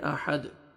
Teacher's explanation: گے اور ہا پڑھیں گے، ہا میں آواز نہیں جانا چاہیے، دال ساکن، قلقلہ کریں گے